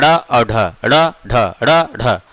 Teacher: जब इनका हम उच्चारण करते हैं तो जिह्वा ऊपर जाती है और ऊपर के बाद झटके से नीचे आती है। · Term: उत्क्षिप्त व्यंजन